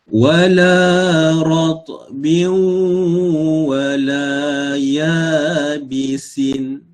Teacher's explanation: tanwin dia bertemu dengan huruf waw, maka kita kena idghamkan dia.